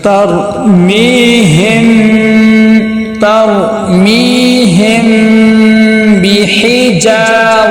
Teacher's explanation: میم کی آواز کو ناک میں لے کے جائیں گے، غنہ کریں گے۔ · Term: اخفاء شفوی